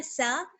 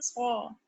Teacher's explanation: سین باریک پڑھی جاتی ہے اور صاد جو ہے وہ موٹا پڑھا جاتا ہے. یہ ان دونوں میں فرق ہے لیکن دونوں کا مخرج سیم ہے.